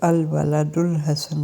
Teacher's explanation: اب دیکھیے کہ اس میں الف لام جو ہے الحسن کا، اس سے پہلے چونکہ لفظ آ گیا الولد، تو پھر وہ الف لام کا الف جو ہے نا وہ حمزۃ الوصل تھا، وہ اب نہیں پڑھا جائے گا، لکھنے میں رہے گا لیکن پڑھا نہیں رہ جائے گا۔ تو ہم الولد کے دال کے اوپر جو پیش ہے اس کے ساتھ اس کو ملا دیں گے تو الولد الحسن بن جائے گا، ٹھیک ہے۔ · اور اس سے معرف باللام سے پہلے اگر کوئی حرف آ جائے تو اسے الف لام سے ملا کر پڑھنا چاہیے۔ اس وقت الف لام کا حمزہ، جسے حمزۃ الوصل کہتے ہیں، تلفظ سے گر جاتا ہے، لیکن لکھنے میں الف کی صورت میں باقی رہتا ہے۔